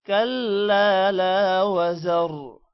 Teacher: کلا الف لام کے بعد لمبا کریں گے. لا کو بھی لمبا کرنا ہے کیونکہ لام کے بعد الف ہے